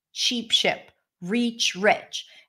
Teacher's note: there are two different sounds, the tense E and the lax I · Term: sheep ship vowel pair